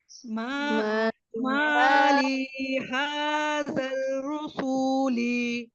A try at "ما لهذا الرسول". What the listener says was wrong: रा के ऊपर जबर है, इसको रा पढ़िए, रा रू नहीं है ये। रसूली